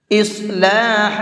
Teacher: صاد کو منہ بھر کے پڑھیں گے